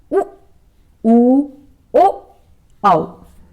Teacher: जिन स्वरों के उच्चारण में ओष्ठों की स्थिति वर्तुलाकार लगभग वृत्त के समान हो जाती है, वर्तुल या वृत्तमुखी स्वर कहलाते हैं।